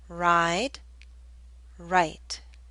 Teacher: The I in ride should be longer because the D is a voiced consonant.